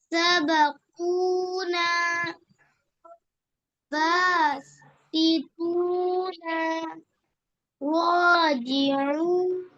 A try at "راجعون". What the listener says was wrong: نون کو کیوں کھینچ رہے ہیں آپ؟ زبر زیر پیش کو تھوڑا بھی. وہاں زبر زیر پیش کو تھوڑا بھی تیز بتاؤ. تھوڑا بھی تو کھینچ کیوں رہے ہیں پھر؟